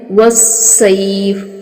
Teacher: तश्शिताई नहीं पढ़ना, तश्शिताई वस्सैफ। स्वाद है, स्वाद को स्वाद ही पढ़ना है, सख्ती भी करनी है और इसको पुर और मोटा करके भी पढ़ना है।